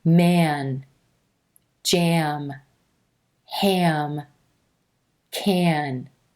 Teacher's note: So what's happening here is as the sound transitions from the mouth or oral cavity where the vowel sound a is resonating up into the nose or nasal cavity where the n and are resonating, there's a little teeny schwa sound that happens.